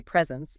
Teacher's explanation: emphasizing the first syllable